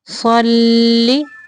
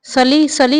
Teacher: صاد کو موٹا پڑھیں گے اور لام کو باریک پڑھیں گے۔ صلی، سلی سلی نہیں پڑھنا، اس کو لام پہ شد ہے تو اس لیے صاد کو لام کے ساتھ تھوڑی دیر ملانا ہے۔